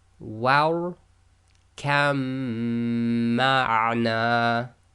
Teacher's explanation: So we ignore the ba, join the kaf directly to the mim. So kamma. The next set we have the lam followed by a ra.